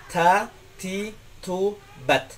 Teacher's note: Ketika kita mengucapkan ta, ujung lidah kita tempelkan di dalam sini, pertemuan antara gigi dan gusi. Ta, seperti T dalam bahasa Indonesia, cuman ada aliran nafas.